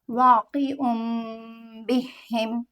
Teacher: next word ہے واقعن، عین پہ دو پیش ہے، آگے میم ہے تو ہم نون کی آواز کو میم میں بدلیں گے اور با حرف میں سے چھپاتے ہوئے پڑھیں گے